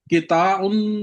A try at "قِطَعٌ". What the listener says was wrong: کو لمب چھوٹا، ہاں جی